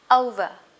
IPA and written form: 'əʊvə (over)